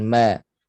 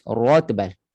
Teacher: Ma istifal, nipiskan ma. Pastikan jangan terpengaruh dengan ketebalan ra. Ra ni tebal lah.